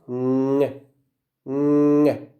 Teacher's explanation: We close the same place that we close for ke and ge, and we produce the sound ng. Why? Because we let air go out of the nose. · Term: nasal sound